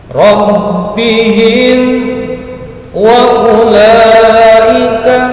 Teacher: Idhar safawi itu bacaannya adalah jelas, tidak mendengung, pendek.